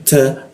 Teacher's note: ujung lidahnya ditempelkan ke gigi dia